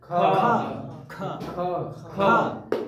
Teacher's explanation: अधिक से अधिक वायु हमारे हाथ को स्पर्श कर रही है